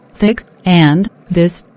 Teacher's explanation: the th sound unvoiced and the voiced counterpart